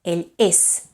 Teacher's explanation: It's a voiceless S, ell és. Right? It's completely voiceless.